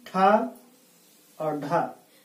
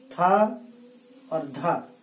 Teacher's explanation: जिन वर्णों के उच्चारण में कम प्राणवायु खर्च होती है अल्प प्राण, जिन वर्णों के उच्चारण में अल्प प्राण से 2 गुनी मात्रा खर्च होती है वो महाप्राण ध्वनि कहते हैं